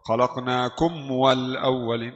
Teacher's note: Harus khalaqnakum makhraj mim dulu kemudian masuk di makhraj w.